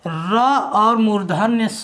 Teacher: ट वर्ग के सभी 5 वर्ण को शामिल करेंगे, प्लस इसमें हम लोग देखेंगे र और मूर्धन्य स। र प्लस मूर्धन्य स, इन दोनों का उच्चारण स्थान भी मूर्धा होता है।